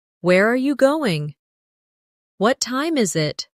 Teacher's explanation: for information questions, those starting with who, what, when, where, why, how. The tone often falls at the end. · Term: falling tone